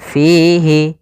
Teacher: adanya kasrah bertemu Ya Sukun panjangnya dua harakat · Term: mad tabi'i